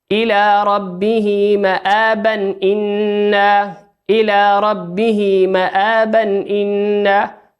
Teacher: تنوين بالفتح أتى بعده حرف الهمزة، والهمزة من حروف الإظهار